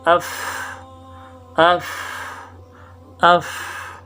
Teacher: اوپر والے دانت ہونٹوں کے تر حصے سے لگ کر فا نکلتے